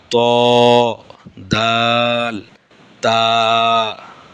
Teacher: জিহ্বার আগা সামনের উপরের দুই দাঁতের গোড়ার সঙ্গে লাগাইয়া। জিহ্বার আগা সামনের উপরের দুই দাঁতের গোড়ার সঙ্গে লাগাইয়া, এই যে পরপর যে দুইটা দাঁত আছে, এই দুইটা দাঁতের গোড়ার সঙ্গে জিহ্বার আগা লাগাইয়া 3টি হরফ উচ্চারিত হয়।